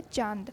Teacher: तो अनुनासिक में हमारा जैसे एग्जाम्पल है चांद, यानी जो चंद्र बिंदु है वो हमारा मुंह और नाक से इसका उच्चारण होता है। हमारे चांद का उच्चारण हमारे दोनों मुंह और नाक से दोनों से होता है।